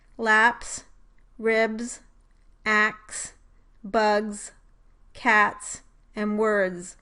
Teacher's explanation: when stop plus fricative consonant clusters are found at the end of syllables in English, they are articulated in the same way as an affricate consonant, although with different places of articulation.